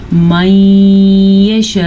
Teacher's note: نون ساکن کے بعد یمون میں سے یا ہے تو اسی طرح ہم دونوں کو آپس میں ملا کے پڑھیں گے, غنے کے ساتھ پڑھیں گے